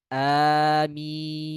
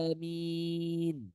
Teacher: Ya, bacaan yang benarnya amin. Ya, dengan a-nya 2 harokat saja. 2 harokat. Tidak 4, apalagi 6. Karena sebagian orang ketika dia membaca amin, saking semangatnya dia baca amin.